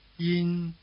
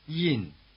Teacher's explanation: one stays high and one starts high but drops sharply to the bottom.